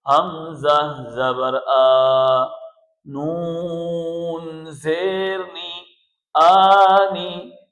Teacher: اس حمزہ کے اندر جھٹکا نہ ہو، حمزہ کو حمزہ ساکنہ بنا کر نہ پڑھیں۔ اس حمزہ کے اوپر کھڑا زبر ہے، اس کو ہم ایک الف کی مقدار کھینچ کر پڑھیں گے۔